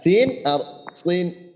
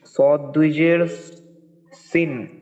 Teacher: সিন দুই জের সিন পাতলা। হ্যাঁ, আর সদের ক্ষেত্রে সদ একটু মোটা